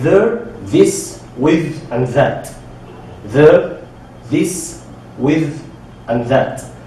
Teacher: We have 2 kinds of TH sounds, the voice and the unvoiced. The voice sound is when you have like a vibration in your vocals when you are saying this TH. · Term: voice TH sound